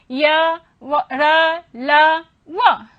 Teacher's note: इन व्यंजन अंतस्थ व्यंजन वर्णों के उच्चारण में जिह्वा एक दूसरे से, जिह्वा, तालु, कंठ, ओष्ठ, दंत, ये सब आपस में मिलते तो हैं परंतु सटे होते हैं, परंतु पूर्ण रूप से जिह्वा इनको स्पर्श नहीं करती है